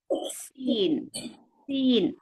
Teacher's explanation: சீன் ஒரு light letter, சத்தம் கீழ் நோக்கி தான் போகணும். · நுனி நாக்கு கீழ்ப்பல் ஈர். சீன் அப்படியே சொல்லும்போது காற்று வெளியே வரணும்.